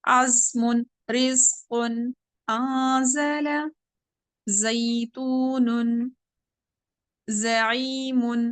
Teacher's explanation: زا کی آواز بھی باریک اور سیٹی والی